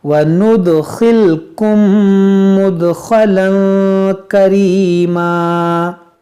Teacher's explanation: یہاں پر دیکھیں میم ساکن کے بعد دوسری میم ہے تو یہاں پر ادغام شفوی کریں گے، یعنی غنہ کریں گے